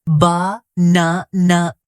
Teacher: in the word banana, the stress is on the second syllable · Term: word stress